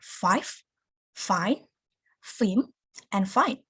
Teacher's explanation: Labiodentals are produced by raising the lower lips until it comes near the upper front teeth. It sounds like f, f.